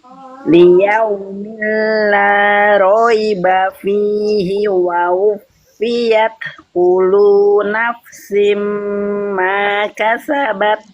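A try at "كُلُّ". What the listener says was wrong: Ulang dari wa wufiyat kullu, bukan kulu tapi kullu nafsim ma kasabat. Ulang.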